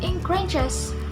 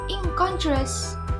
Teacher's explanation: the morpheme in becomes ing when preceding a velar consonant